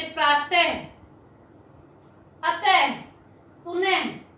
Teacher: ये दो बिंदु होते हैं, इसका उच्चारण आधे है के समान होता है। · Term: विसर्ग